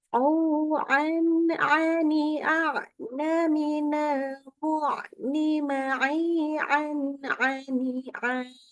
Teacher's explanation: Jadi tidak boleh ditahan-tahan ketika membaca tanwin ketemu dengan ain.